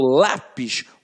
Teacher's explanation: quando eu falo lápis o lá tem um som mais forte